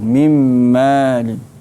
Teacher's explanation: Nun mati bertemu dengan mim. Mim kena baca dengan dengung.